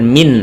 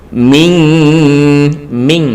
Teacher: nun sukun bertemu qaf maka di sini adalah nun-nya seperti Eng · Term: ikhfa